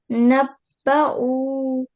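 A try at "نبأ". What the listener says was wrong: It's a short vowel, so one more time. Don't stretch.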